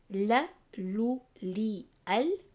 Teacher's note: the lamb diverts from the side of the tongue towards the tip of the tongue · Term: Inhiraaf